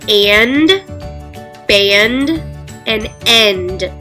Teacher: there's two consonants put together at the end, N and D, and they make two separate sounds. So, and, I can hear the N, and I can hear the D. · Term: consonant clusters